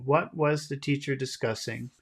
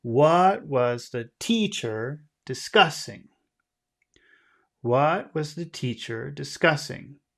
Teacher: the most important word is the word what it's the word we want people to hear the most